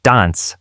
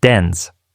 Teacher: in British English it's pronounced with a broad a like Dan while in American English it's pronounced with a flat